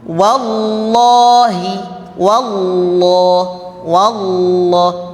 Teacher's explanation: bisa dibaca tebal dengan O ya O yang tidak keluar dari bibir